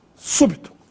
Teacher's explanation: aí a sílaba tônica é a antepenúltima, su, e também recebe acento agudo no U, súbito.